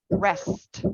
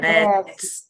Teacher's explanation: The S should be longer. It sounds like you want to make it very, very long.